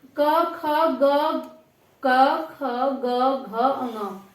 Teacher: इसकी जो आवाज आ रही है वो कंठ से आ रही है बिल्कुल